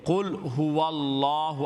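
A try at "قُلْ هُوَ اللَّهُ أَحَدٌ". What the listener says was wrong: نہیں ہو وال کیوں؟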